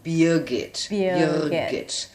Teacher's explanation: There is an R sound, but we are kind of lazy and we don't pronounce the R sound.